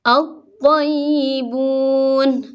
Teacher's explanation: Ada alif lam tapi langsung ke suara to, alif lamnya seolah-olah tidak ada ya. Jadi langsung ini maksudnya lamnya seolah-olah tidak ada. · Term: asy-syamsiyah